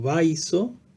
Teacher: esta yod va a influir sobre la A, como ya hemos dicho, cerrándola en un punto de su articulación, es decir, achicando el espacio, y por lo tanto la A va a mutar en E